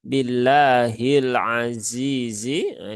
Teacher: Maka jangan ditekan terlalu berlebihan karena lam sifatnya bukan syiddah tetapi tawasub